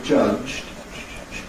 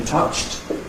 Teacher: In [ʤʌʤ̥d̥], [ʤ̥d̥], [ʤ̥d̥], it's very gentle, [ʤ̥d̥], [ʤ̥d̥]. In [tʌʧt], it's much noisier, much more pressure.